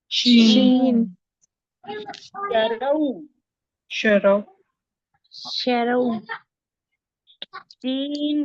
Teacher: जुबान का बीच सेंटर और उसके मुकाबिल ऊपर के तालू से शी अदा होता है। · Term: शीन